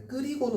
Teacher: 끓이고는 히읗이 탈락되고 그냥 연음이 되는 거죠.